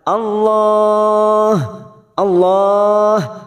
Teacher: Allah lam jalalah yang sebelumnya fathah kita baca tafkim atau tebal